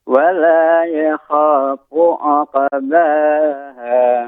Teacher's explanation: ketika membaca ainnya kan harokat dhammah, ini dimonyongkan sedikit Bapak